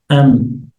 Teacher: So when you say M, you have the two lips coming together, M. So and at the same time there is a nasal sound, and there is nasalization. This Ghunnah takes place in the nose. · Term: meme